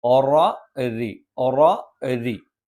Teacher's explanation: ഒറ എന്ന് ഉച്ചരിക്കുമ്പോൾ നാവിന്റെ മധ്യഭാഗം മുകളിലേക്ക് ഉയർന്നു നിൽക്കും അവിടെ ശബ്ദം കനപ്പിച്ചാണ് വരുന്നത് റി എന്ന് നമ്മൾ ഉച്ചരിക്കുമ്പോൾ അവിടെ നാവിന്റെ മധ്യഭാഗം താഴ്ന്നു നിൽക്കും അലപം കനപ്പിക്കാതെ